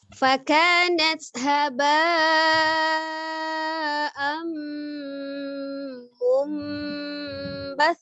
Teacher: Kemudian disertai dengan gunnah bi gunnah, dengan gunnah didengungkan. Jadi ditahan dulu mimnya, ditekan dan ditahan, suaranya dimasukkan ke al-khisum, rongga hidung ya, untuk makharijul huruf gunnah. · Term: idgham bi gunnah